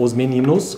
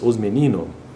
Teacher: os meninos não tem problema esse S sumir aí da pronúncia ou da fala